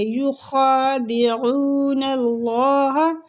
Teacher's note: اللہ کی لام کو ادھر پور پڑھیں گے کیونکہ نون پہ زبر ہے، تو اس زبر کی وجہ سے ہم اللہ کے لام کو پور کریں گے۔